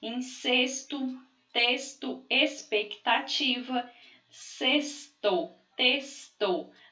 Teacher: Olha, som de S, incesto, texto, expectativa, sexto, texto. A gente aqui não está pronunciando o X como um X, mas como um S